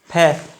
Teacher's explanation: हिंदी का जो फै है वो है सीधा, इसको आप इस तरह से बोलते ही हैं फै, होठों से बोलते हैं